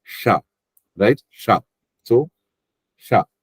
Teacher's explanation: This sha is Thalavya sha. That means it goes back.